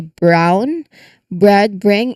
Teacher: The B sound a voiced lip closure leads directly into the R sound. So it's a voiced release from his lips straight into the Y position. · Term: burr cluster